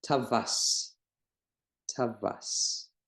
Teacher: then we pronounce this vav like V in English. It's a consonant, it's not a vowel. And we pronounce it tavas.